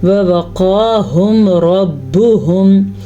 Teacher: ووقاہم 2 واؤ ہیں تو دونوں ہی واؤ پڑھنا اور کسی بھی ایک واؤ کو لمبا نہیں کرنا. قاف کو پر پڑھنا ہے کیونکہ قاف حروف مستعلیہ میں سے ہے اور کھڑی زبر کو بھی ادا کرنا ہے.